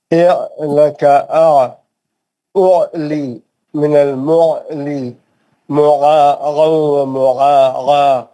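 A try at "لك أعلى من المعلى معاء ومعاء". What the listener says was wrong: پھر سے گائن کی آواز آ رہی ہے.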